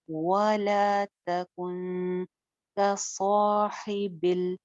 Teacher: स्वाद मोटा और इसके साथ का अलिफ बी मोटा